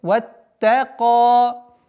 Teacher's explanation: С огласовки фатха уходим на удвоенный та. Потом, так как та мягкая, ваттака.